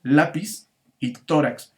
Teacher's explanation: su sílaba tónica está en la penúltima sílaba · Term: palabras graves